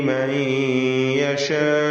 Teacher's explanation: യഹ്ദി മൻ യശാ, ഇവിടെ മൻ എന്നതിലെ സാക്കിൻ താനൂനിനെ ഇദ്ഗാം ബിഗുന്ന ചെയ്ത് യായിലേക്ക് ലയിപ്പിച്ച് മണിച്ചുകൊണ്ട് ഉച്ചരിക്കണം.